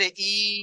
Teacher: তো এই খাড়া জের ইয়া মাত্রার সমতুল্য, মানে এই খাড়া জেরকে ইয়া মাত্রার মতো একালিক পরিমাণ টান দিয়ে পড়তে হবে